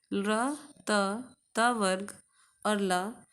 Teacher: र त वर्ग और ल ये सब दंत से बोले जाते हैं